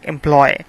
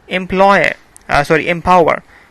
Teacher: This is actually a sequence of vowel sounds. There are three vowel sounds coming together. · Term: triphthong